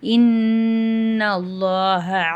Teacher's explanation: அல்லாஹ்ன்ற வார்த்தையும் நம்ம வல்லினமா ஓதணும்